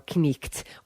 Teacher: pronounced both elements of consonant combinations, such as the K, N in an old word like knight